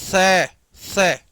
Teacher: तीनों का उच्चारण स्थान अलग-अलग है। देखो मैं स बोलूंगा दांतों को टच करते हुए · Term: दंत स